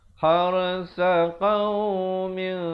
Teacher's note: Asabat ada hamasnya di situ. Ro-nya dibaca tebal, ha pedas.